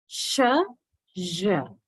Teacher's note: You would feel both parts of your tongue are rising, blade and the front, towards blade towards the alveolar ridge, front towards the hard palate. Sh, j. Same place, only difference is the voicing. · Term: Alveolar palatal sound